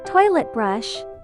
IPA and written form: 'tɔɪlət brʌʃ (Toilet Brush)